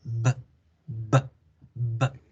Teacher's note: La B bilabial genera una plosión en la boca después de haber vibrado.